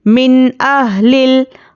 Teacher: नून साकिन के बाद हुरूफ़े हलक़ी आया है, हम यहाँ पर नून को ज़ाहिर करके पढ़ेंगे। यह इज़हार का क़ायदा है यहाँ पर, इसलिए हम नून को ज़ाहिर करके जल्द पढ़ेंगे।